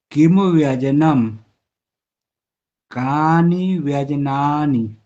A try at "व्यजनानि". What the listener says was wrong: व्यजनानि, जा में आ है। व्यजनानि, नी ह्रस्व है।